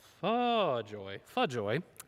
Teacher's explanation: take out the R on the word for and open it up to a schwa